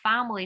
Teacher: My family, cái từ này phải có stress được không nào? Nó là family cho âm thứ nhất nha.